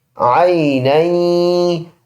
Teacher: ناک میں آواز لے کے جائیں گے ایک الف کی مقدار